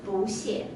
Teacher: Usually we read it fourth tone, but when it followed by another fourth tone, it changed to second.